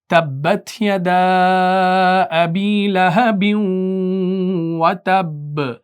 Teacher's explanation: ادغام کیا، یعنی آپ نے تنوین کو آگے واو مشدد کے ساتھ مرج کر دیا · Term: ادغام مع الغنہ